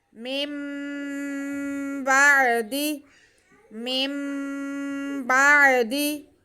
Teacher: با پہ زبر، عین ساکن، دال کے نیچے زیر، کسی کو بھی کھینچنا نہیں ہے یہاں، بس ہم نے یہاں پہ نون ساکن کی آواز کو میم میں بدل کر پڑھنا ہے اور غنہ کرنا ہے